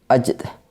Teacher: Kemudian ajd merupakan qalqalah sugro karena salah satu huruf qalqalah sugro yaitu jim berharokat sukun berada di tengah kalimat. Cara membacanya yaitu dengan sedikit dipantulkan